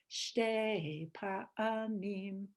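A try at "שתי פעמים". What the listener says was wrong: Fe'amim. Fe. That's a fe.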